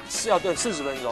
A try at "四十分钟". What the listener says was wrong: 对 ， 你 这 个 十 跟 四 哈 要 发 音 。